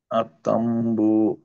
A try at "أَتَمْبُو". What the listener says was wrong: আবার একটু বেশি ধরে রাখেন, নয়তো আমি বুঝতে পারবো না যে গুণনা দিচ্ছি।